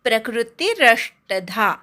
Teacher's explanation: प्रला क जोडायचा नाही, प्रकृती पटकन म्हणायचं